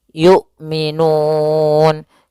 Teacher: hamzah memiliki sifat jahar dan sifat syiddahnya dan jelas ya, maka suaranya harus tertahan nafasnya dan tertahan suaranya. Yu, a, i, u, tidak boleh yu, tidak boleh juga yu gitu ya, tidak boleh dibaca dengan ain tapi dia hamzah.